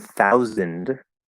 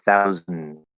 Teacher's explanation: I go straight from the Z to the N. I just close it into a vowel sound. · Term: syllabic consonant